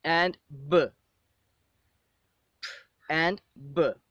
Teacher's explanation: In fact, when we produce these two sounds, p and b, both of the lips join together and there is a complete obstruction of the air behind the lips. Okay, but at the end, the air is released immediately with an explosion. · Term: bilabial plosive, bilabial plossives